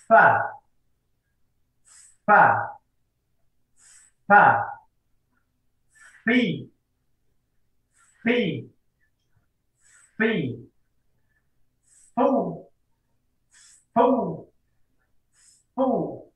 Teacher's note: makhraj huruf fa adalah bibir bawah bagian dalam bertemu dengan ujung gigi seri atas